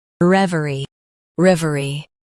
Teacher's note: Stress rev and keep er soft.